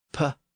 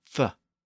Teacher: A P is made by putting the upper and lower lips together. And an F is made by shifting the lower lip backward. And instead of touching the top lip, you touch the top teeth.